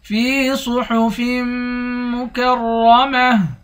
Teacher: صاد کو موٹا پڑھیں گے، فا کو میم کے ساتھ ملا کر میم پر غنہ کریں گے، آخر میں را ہے، را کو موٹا پڑھیں گے، آخر میں گولتا ہے، گولتا پر جب وقف کریں گے گولتا ہاں بن جائے گی۔